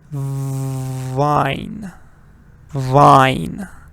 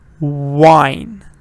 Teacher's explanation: So when you're saying V, like this one, you exactly go, your teeth go on your lower lip. Vine. Vine. But when you're saying the W one, your lips come forward like this.